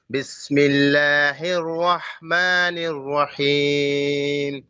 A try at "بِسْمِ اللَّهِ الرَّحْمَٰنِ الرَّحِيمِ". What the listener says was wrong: آپ را کو موٹا پڑھیں. کیوں پڑھے را کو موٹا؟ رحمان میں.